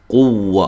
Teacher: واو کو ادا کرتے دونوں ہونٹوں کو گول کرنا ہے